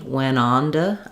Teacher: Sometimes also when we move from an N to a T, we're going to flap that T. It'll sound more like a D.